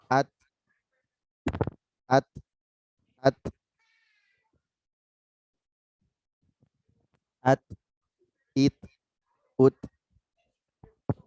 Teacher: Terakhir huruf ta hamasnya ditunaikan.